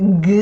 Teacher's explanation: So like G sound, in English it's g, it's vibrating a lot if you touch your vocal cord